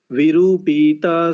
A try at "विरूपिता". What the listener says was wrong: विरूपिता, विरूपिता, ये देखिए पीता कर दिया आपने। विरूपिता, हाँ विरूपिता, दीर्घ नहीं है